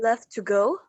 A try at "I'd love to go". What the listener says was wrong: no i'd you need to pronounce the d